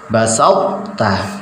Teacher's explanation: Makhrajnya sudah berada di makhrajnya ta. Hanya saja isti'la'nya dan idbaknya ini masih ada.